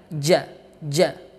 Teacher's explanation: jim ini di tengah lidah, ja. Jangan juga menyebutkan huruf jim ini, jangan ja, tidak, tapi ja.